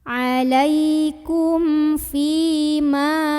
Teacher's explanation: Karena ada ya sukun yang sebelumnya ada huruf berbaris kasrah. Maka huruf fa yang barisnya kasrah ini dipanjangkan 2 harokat saja. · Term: mad tabi'i